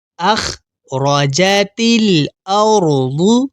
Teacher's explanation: اور یہاں پہلے والے را کو دیکھیے، یہاں را کے اوپر زبر ہے تو یہاں ہم را کو موٹا یعنی منہ پر کر کے پڑھیں گے